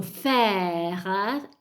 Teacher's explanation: Mentre quando dico faire, sentite che la bocca è più aperta, quindi il suono è più aperto ed è una grave, quindi grave, grave, il suono è grave.